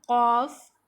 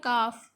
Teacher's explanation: یہ زبان جڑ جب سخت تالو سے لگے یعنی زبان کی جڑ جب سخت تالو سے لگتی ہے تو کاف ادا ہوتا ہے. زبان کی جڑ جب کوے کے قریب نرم تالو سے لگے گی تو قاف ادا ہوگا اور جب سخت تالو سے لگے گی تو کاف ادا ہوگا